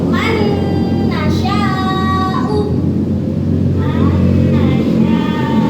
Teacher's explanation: Nun sukun bertemu nun berarti idgham biguna. Cara membacanya Dengan dengung. dimasukkan dulu tuh.